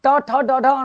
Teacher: आप जब ट ठ ड ढ ण बोलते हो तो जीभ पूरी की पूरी अंदर घुस जाती है। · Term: मूर्धन्य